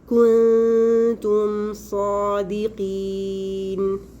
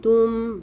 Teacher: मीम को उसके मखरज से बग़ैर ज़ायद गुन्ना के पढ़ेंगे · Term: इजहार शफ़वी